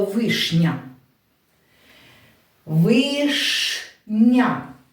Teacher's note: буква Я не розкладається на два звуки й а а тільки пом'якшує попередній приголосний